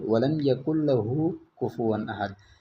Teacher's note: ہم نون کو بالکل پڑھتے ہی نہیں ہیں اور بالکل اپنی زبان پہ لاتے ہی نہیں ہیں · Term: ادغام